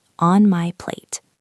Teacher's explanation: We don't always say plate, we just stop the air.